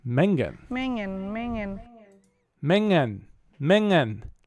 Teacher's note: how those two NG sounds once again kind of blur together into one